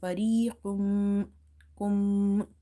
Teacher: Fariqum, kum. And you have to hold this meme sound in order to pronounce the gunna here